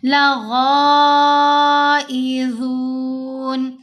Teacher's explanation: غین کو البتہ یہاں ہم موٹا پڑھیں گے. غین کے اوپر یہ جو مد ہے یہ مد متصل ہے، 5 حرکات کی مقدار ہم نے لمبا بھی کرنا ہے، اور حروف مستعلیہ میں سے ہے غین بھی اور غا بھی، دونوں کو پر پڑھا جائے گا، دونوں کو موٹا پڑھا جائے گا.